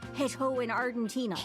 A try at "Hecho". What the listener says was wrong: Hecho. Pronouncing the H so strongly is so funny. Hecho.